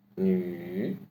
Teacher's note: now we apply some hoarse voice to make it a third tone.